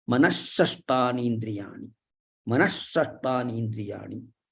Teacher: So Visarga followed by Shakara. So here this Visarga will go away and one ish will come. Ish will come.